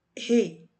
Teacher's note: O I aqui está acompanhado do E. Então, aqui o E é uma vogal, o I é uma semivogal. E essa semivogal, ela é representada foneticamente por esse fonema aqui.